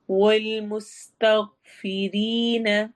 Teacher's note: والمستغفرین، مس سین میں سیٹی والی آواز، تغ غائن ہے لیکن ہم اس کو تغ نہیں کرنا، ہلانا نہیں ہے، تغ وہیں پہ آواز کو روکنا ہے ورنہ وہ قلقلہ ہو جائے گا، اور غائن قلقلہ والے حروف میں سے نہیں ہے۔